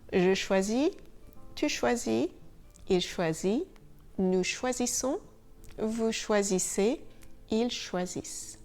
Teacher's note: So the endings are IS, IS, IT, ISSONS, ISSEZ, ISSENT. Notice that just like for the verbs in ER, phonetically the last letters are not sounded.